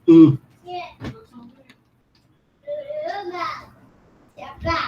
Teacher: os tupis dizem um U com boca de I. Então, eles fazem U.